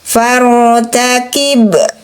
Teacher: harokat fathah sebelum huruf ra menandakan huruf ra dibunyikan tebal. Jangan far, tapi faru. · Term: tafhim